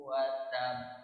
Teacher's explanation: Nah, tasydidnya ditahan dulu baru keluar pantulan. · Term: qalqalah huruf ba